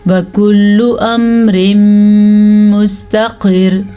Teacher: یہ را بھی باریک پڑ جائے گی کیونکہ را وقف کی حالت میں پیچھے زیر ہے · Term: را باریک